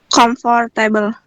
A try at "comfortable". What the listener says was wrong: Jadi ini banyak yang bacanya comfortable ya. Nah, sebenarnya bacanya itu kayak gini, comfortable. Jadi disatuin, jadi cuma ada 2 syllable. Comfortable gitu loh. Kayak comfortable, 3 deh, comfortable. Jadi si comfort, for-nya nggak dibaca.